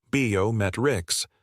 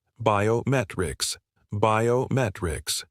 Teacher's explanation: The correct stress is biometrics. The emphasis is on met.